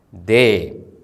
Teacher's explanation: The letter Yud that comes after the vowel A is not pronounced.